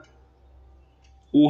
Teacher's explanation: ऊ किस प्रकार का स्वर है? वो है पश्च संवृत